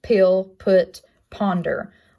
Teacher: Next stop consonant is a P, which makes the p sound. It's a bilabial placement. It is not voiced and shown up in words such as pill, put, ponder